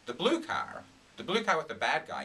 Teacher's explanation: I'm using the intonation and stress to kind of contrast the new information with the old information